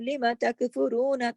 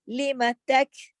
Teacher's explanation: لما تک، یعنی کہ اس کے مخرج پہ آ کے ایک دم رکنا ہے، جیسے نا باس کا رکنا نہیں ہے مقصد، ادھر سختی سے جما کے پھر آگے جانا ہے. فا کے اوپر پہنچنے سے پہلے کاف پہ جمانا ہے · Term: جماؤ کے ساتھ